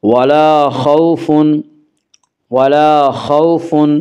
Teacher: واولین کو نرم آواز کے ساتھ جلدی پڑھیں گے